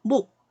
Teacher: 시옷을 탈락시키고 이렇게 기역만 발음이 되죠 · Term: 자음군 단순화